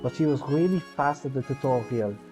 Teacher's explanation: for the french accent i'm trying to really highlight the rs and the silent h's